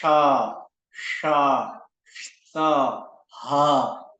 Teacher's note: इन अक्षरों के उच्चारण करते समय एक गर्म वायु हमारे मुख मंडल से निकलता है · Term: उष्मा अक्षर